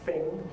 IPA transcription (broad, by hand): fɪŋ